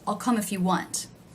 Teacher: if is one of the words that is not stressed it is lower in pitch